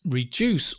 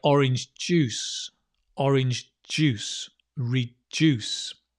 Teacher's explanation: although it's spelled with a d right it has a j sound